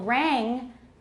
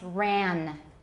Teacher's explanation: they often substitute an alveolar nasal where there should be a velar nasal